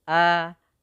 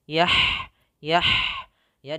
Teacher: huruf hamzah yang mana A itu suaranya harus tertahan a tidak mengalir tapi di tahan suaranya